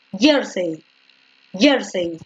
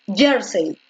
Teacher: Cuando la fuerza de voz se encuentra en la penúltima sílaba, en este caso en yer, se le conoce como graves o llanas.